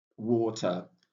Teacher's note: Then you see war and you see ch. So it shows that war is pronounced louder. The first syllable there, water.